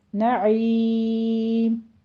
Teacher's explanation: عین کی آواز نعیم کہنا، آپ نے نعیم حمزہ نہیں لانا